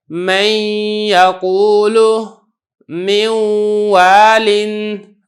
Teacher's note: جو نون ہے اس کی جو صفت غنہ ہے وہ کچھ نہ کچھ ادا ہو رہی ہے، اس وجہ سے اگرچہ میں پڑھ تو واو رہا ہوں لیکن یہ جو ادغام ہے یہ ناقص ادا ہو رہا ہے. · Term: ادغام ناقص